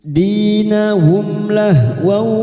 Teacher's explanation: Mim sukun dibaca jelas tanpa mendengung idhar syafawi. Bertemunya mim sukun dengan huruf hijaiyah selain mim dan ba.